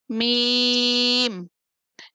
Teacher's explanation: میم بند ہونٹوں کے خشک حصے سے ادا ہوتا ہے